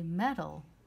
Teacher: notice that that a is actually a short u sound that represents a schwa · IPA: ə